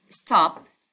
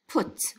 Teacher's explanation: So sometimes, like we say stop for the P sound, it's not necessary to have full puffing for the P sound